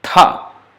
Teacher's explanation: Now same ta with force of breath, aspirated. Tha, not taha.